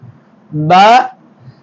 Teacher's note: உதட்டின் உள்பகுதி ஒட்டுவதால் பா வெளியாகும்